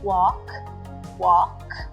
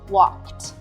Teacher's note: sound let's use our hand trick to find out walk walk there's no vibration on the final k this tells me the word walk ends in an unvoiced sound